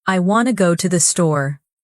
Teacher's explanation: Notice how I, want, go, and store are clear and strong, but to, the, and to are weak and quick. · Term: rhythm